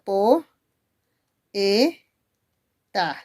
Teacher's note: por qué tiene que ser o e c porque fácil preciosos la o es una vocal abierta la e es otra vocal abierta y las vocales abiertas se tienen que separar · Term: iato